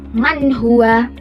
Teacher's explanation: Semuanya dibaca jelas tanpa dengung. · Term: izhar, idhar